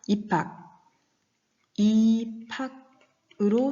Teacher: 비읍과 히읗이 만났습니다. 그랬는데 둘이 합해져서 피읍이라는 하나의 소리로 바뀌었습니다. 둘이 합해서 하나의 소리로 축약된 예죠. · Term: 격음화